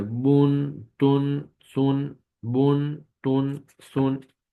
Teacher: पेश की तनवीन को पढ़ते हुए होंठों को गोल करके पढ़ा जाएगा